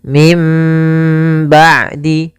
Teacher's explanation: cara baca yang pertama dengan idbak yang kedua dengan furjah tapi kami memilih untuk membaca dengan idbak yaitu bibir kita tertutup dengan rapat · Iklab yaitu membalikkan suara nun menjadi suara mim. Maka di sini ditandai dengan ditanda di huruf mim atasnya, dalam rosamnya ada mim kecil di atasnya. · Tapi kami memilih untuk membaca dengan idbaq, yaitu bibir kita tertutup dengan rapat. Sedangkan furjah masih ada sedikit rongga mulut bibir kita yang kita terbukakan sedikit untuk dia ada keluarnya nafasnya gitu ya, atau keluarnya suara itu.